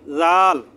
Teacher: জিহ্বার আগা সামনের উপরে দুই দাঁতের আগার সাথে লাগিয়ে বলবেন জাল